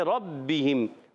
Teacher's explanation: ربہم، را پر زبر آ گیا، را پر پڑھیں گے ربہم. با مشدد ذرا رک کر ادا کریں گے. با کے نیچے زیر ہے، ہا کے نیچے زیر ہے، اور ہا میم سے مل رہی ہے.